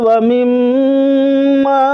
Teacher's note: یہاں غنہ کیا جائے گا کیونکہ میم حرف مشدد ہے